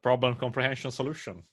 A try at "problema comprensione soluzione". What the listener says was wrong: You don't have the Italian when you say it.